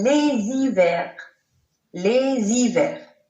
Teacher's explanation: on entend bien le son Z de la liaison au pluriel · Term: H muet